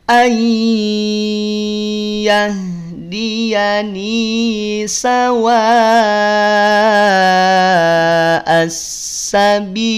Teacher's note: Bi panjang 2 atau 4 atau 6 harokat, mad arid li sukun.